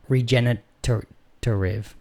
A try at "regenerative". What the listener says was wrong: Regenerative. You added an extra T's in there.